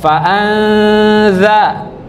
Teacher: samarkan bunyinya menjadi huruf dza